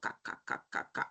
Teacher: Velar. El posdorso de la lengua, o sea, la caída de la lengua, choca con el velo que está pasando el paladar